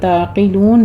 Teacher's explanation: عین کو وسط حلق میں لے جا کے سٹاپ کرنا ہے، جھٹکا نہیں دینا. قوف کو پر پڑھنا ہے.